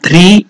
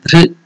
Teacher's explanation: one word సహజ another సమాధిం three words together ధృత సహజ సమాధిం so now here ధృ that is the ఋకార is there so it is not ధ్రీ it is not ధ్రు it is ధృ then it is మహాప్రాణ ధృ so you have to give more